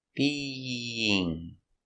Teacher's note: We have the y sound in the middle to connect the vowels. Being. Not being, it's a very soft sound.